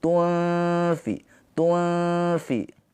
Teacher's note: cara bacanya itu gigi atas ditempelkan ke perut bibir bawah. Gigi atas ditempelkan di perut bawah, ujung giginya. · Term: ikhfa hakiki